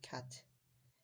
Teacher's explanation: position of tongue low in your mouth and shift it towards the front